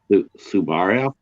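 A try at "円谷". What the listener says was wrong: Yeah, Su Ba, but in this case it's Subu. It's Buraya. So it's Suburaya. if you say Honda or Honda, it's the same kind of thing.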